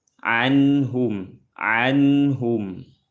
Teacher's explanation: Anhum ada nun sukun bertemu dengan ha. Hukumnya izhar halqi. Dibaca jelas.